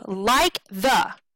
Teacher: those are two very quick syllables those would be unstressed syllables